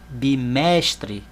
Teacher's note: Vejam que eu falei o mesh mais alto. Então, mesh é a sílaba tônica. Agora, a sílaba tônica não é a última, é a penúltima.